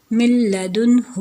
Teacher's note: آگے ہے جی سیکنڈ نون کا لام میں، تو جیسے من لدنہ اللہ تعبدوا، تو یہاں پہ بھی نون کو بالکل مدغم ہو رہا ہے لام میں تو نون کو لام میں مدغم کر دیں گے، اور یہاں پہ بھی نون کو لام میں مدغم کر دیں گے. تو یہاں پہ نون جسٹ لکھنے میں آ رہا ہے، پڑھنے میں یہ نہیں آئے گا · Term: ادغام تام, ادغام